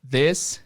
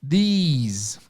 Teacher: a diferença na pronúncia simplesmente é que a primeira vogal alonga-se e no final tem um sonzinho Mais alongado também